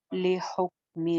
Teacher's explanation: काफ जैसे पहले बताया साकिन काफ है तो इसके ऊपर कलकला जो है वो नहीं करना